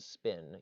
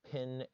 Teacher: Compare the words pin and spin. You don't feel that puff with spin, you do with pin. That's aspiration.